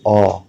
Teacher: इनको बोलते वक्त आपकी जीभ बिल्कुल पीछे चली जाएगी, जैसे आ, बिल्कुल गले की तरफ चली जाएगी, अंदर की तरफ। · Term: पश्च स्वर